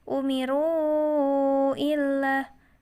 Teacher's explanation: Wama umiru illa ini pun sama mad jaiz munfasil karena di sini ada wawu terletak setelah harokat dhammah, maka itu disebut matobi'i. Dan matobi'i bertemu dengan hamzah di depannya, maka yang tadinya dibaca panjang 2 harokat menjadi 4 harokat.